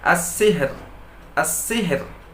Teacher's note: Ketika ro berbaris sukun karena wakaf, ada huruf berbaris sukun, lalu sebelumnya ada huruf berbaris kasroh, maka ro tersebut dibaca dengan tipis